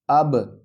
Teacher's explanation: واو لام زبر ول، حمزہ با زبر اب، با پر ہم قلقلہ کریں گے کیونکہ با ساکن ہے